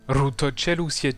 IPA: ru to't͡ʃel u.sje'tu